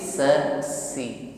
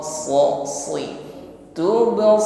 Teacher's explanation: kalau Sin se si ringan kalau SH berat tebal